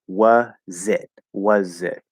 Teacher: sound like the z spelled with an s it's a z it's going to sound like the z sort of attaches over to the next word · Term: bridge sound